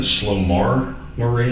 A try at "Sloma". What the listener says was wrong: No, it's Sloma Marie. It's a R behind that though. It's MAR, but it's pronounced Sloma.